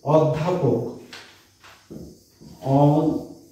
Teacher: অ এর উচ্চারণটা ও এর মতো হয়েছে, তাই এটা সংবৃত।